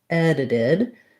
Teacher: This first D is just a regular D. And then because this T falls between two vowel sounds, it also functions like a D. It's a flap T.